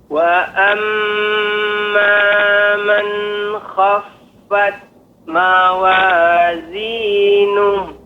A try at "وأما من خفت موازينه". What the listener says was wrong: Ya, untuk pengucapan wa amman maka tidak ada jeda. Artinya pengucapannya wa amma man khaffat, tidak ada tempo. Misalnya Pak pengucapannya wa amma man khaf. Ya, jadi ada jeda. Harus segera man khaf.